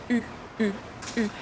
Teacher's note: your lips go forward. U. And your tongue touches your lower teeth. It's important that your tongue is just near your lower teeth.